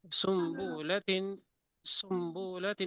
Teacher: یعنی نون ساکنہ و تنوین کو میم سے بدل کر غنہ اور اخفا کے ساتھ پڑھنا. یہ بدلنا اس وقت ہوتا ہے کہ نون یا تنوین کے بعد با آ جائے، خواہ ایک کلمے میں ہو یا 2 میں. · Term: قلب